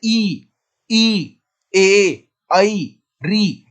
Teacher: जिन स्वरों के उच्चारण में जीभ का अगला भाग प्रयोग होता है तो उसे अग्रस्वर कहते हैं